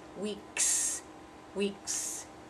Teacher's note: Next one syllable with that s at the end, weeks. That k, k is voiceless, so we have to say s